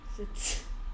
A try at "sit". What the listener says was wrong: 그래서 이게 set 소리 되겠어요? 뭐 이런 소리 내는 건가? set야? 이런 소리 내는 거야? set야?